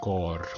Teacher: 마지막에 R은 모음이 없기 때문에 굴려주셔야 됩니다. 고르 아닙니다. 간혹 가다가 보시면은 여기서 자기의 스타일로 뒤에 르라고 붙이는 그런 뭐 유명한 성악가들도 많이 있는데 원칙적으로는 틀립니다. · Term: R 발음을 굴려주셔야